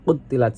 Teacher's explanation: Qutilat dibaca qalqalah sugro pada huruf qaf dibaca mantul ringan